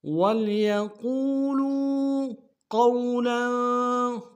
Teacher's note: وَلْيَقُولُوا قَوْلًا، قوف کو موٹا تک واو کے سامنے لانا ہے، واو لین ہے بغیر کھینچے پڑیں گے، لام کے اوپر تنوین غنہ کریں گے۔